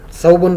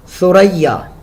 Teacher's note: جب آپ زبان دانتوں کے نیچے لگاتے ہیں تو وہاں سے سا، یعنی نیچے والے اور اوپر والے دانتوں کے درمیان میں کچھ اس کا اگلا حصہ جو ہے وہ باہر کی طرف آتا ہے، سیٹی نہیں ہونی چاہیے اس میں